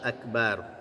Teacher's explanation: Akbar ya tebal ra-nya karena dia disukun karena wakaf ya, maka huruf sebelumnya dibaca fathah, maka dari itu dia dibaca tebal roknya.